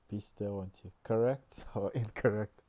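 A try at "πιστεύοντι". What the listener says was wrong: This is pistevondi, v, because after this diphthong there is a vowel, the o, so that means by the grammatical rule that we have in modern Greek, that's a ev sound, pistevondi, and again it's a d, the knee and tav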